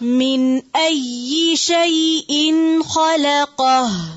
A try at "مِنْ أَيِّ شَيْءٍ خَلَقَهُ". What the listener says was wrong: من أي حمزة کو واضح کریں پھر سے